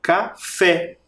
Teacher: café, o som mais forte está na última sílaba, no fé.